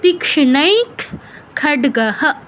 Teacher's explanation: খড্গঃ বিসর্গের পর কিছুই নেই, বিসর্গই শেষ অক্ষর, তাই এখানে পূর্ণ হয়ের মতো উচ্চারণ করছি আমরা বিসর্গকে